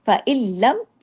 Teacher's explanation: र और लाम वाले जो इतगाम होते हैं इनमें गुना नहीं होता